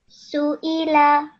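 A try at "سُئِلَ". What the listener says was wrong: But you made sure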